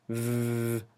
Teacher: it's also labiodental, and it's also a fricative because you can continue it.